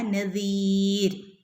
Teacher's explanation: മൂന്നോ അല്ലെങ്കിൽ അഞ്ചോ ഹറക്കത്ത് നീട്ടി ഓതി നിർത്താം